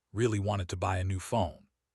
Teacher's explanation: The important words are really buy new phone. But words like ah and to become weaker. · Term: sentence stress